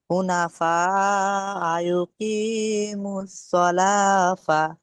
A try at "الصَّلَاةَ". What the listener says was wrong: সলা ফা বলছেন কেন? সলাতা, সলাত মানে নামাজ, সলাতা।